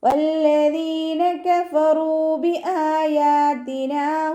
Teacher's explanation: വല്ലദീന വാവ് ഉച്ചരിക്കുമ്പോൾ ചുണ്ടുകളൊന്ന് സർക്കിൾ ചെയ്ത് കൊടുക്കുക. ലാമിന് ശബ്ദ വന്നിട്ടുണ്ട്, 2 ഹർഫുകൾ ഉച്ചരിക്കുന്ന കരം കൊടുക്കുക.